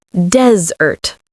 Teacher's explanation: desert as a noun is pronounced desert. The stress is on the first syllable, desert, like the word des with ert at the end. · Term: stress on the first syllable